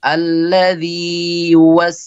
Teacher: Mad thi'i yang wajib dibaca dengan dua harakat secara sempurna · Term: mad tamkin